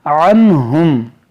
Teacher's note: یہاں پر دیکھیں نون ساکن کے بعد ہا ہے، یہاں پر اظہار کا قاعدہ لگائیں گے